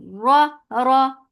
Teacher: Ra, for fatha upon jaws, the sound is short and heavy.